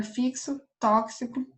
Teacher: Porque eu tenho o som de duas consoantes. Eu tenho o som do C e o som do S, certo? Então, considerado um encontro consonantal.